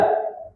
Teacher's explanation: Ha tengah lidah kenakan dengan langit-langit atas.